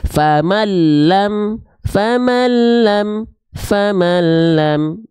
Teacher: Maka kita bacanya bukan faman lam, tapi bunyi an-nya di sini dileburkan masuk ke lam. Famalam, famalam, famalam. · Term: idgham bila gunnah